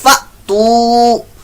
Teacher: یہ حمزہ ساکنہ کا یہاں پر جھٹکا دیں گے